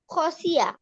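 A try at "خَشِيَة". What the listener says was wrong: না না, হয় নাই, আবার। আ কেন হবে? খসি আ বললে তো এখানে ইয়া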